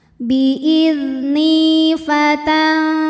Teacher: Ada hukum ikhfa hakiki dengan tingkatan dengung ausato, ikhfa ausato, karena nun sukun menghadapi huruf fa, maka bunyi nun samar-samar siap-siap menuju fa disertai dengung. Dengung dan samarnya sama karena makhraj fa ini tidak dekat tidak jauh dari nun, tengah-tengah.